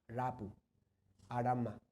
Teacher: Entonces la consonante L es semejante a la R del español. Es una vibrante simple, pero se pronuncia con la lengua en posición ligeramente más lateral y un poco más hacia atrás que para pronunciar la R.